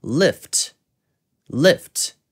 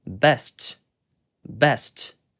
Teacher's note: 단어가 T로 끝나는 경우에도 명확한 T 발음을 해주는데요